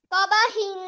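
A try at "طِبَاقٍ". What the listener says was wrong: তারপর তবাহিন হবে না, তবাকিন।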